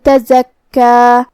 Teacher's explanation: کاف پہ تشدید ہے تو 2 حرف کے برابر ہمیں کاف کو پڑھنا ہے۔ آخر میں مد ہے تو اس کا دھیان رہے۔